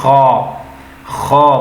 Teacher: खा भी ना पढ़े खे भी ना पढ़े बल्कि ख करके मोटा अदा करें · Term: मोटा हुरूफ